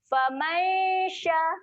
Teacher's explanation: Dengung dia sedia nak sebut huruf shin.